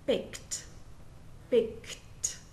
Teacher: in rule one then the Ed D sounds like T and the E is silent so there is no extra syllable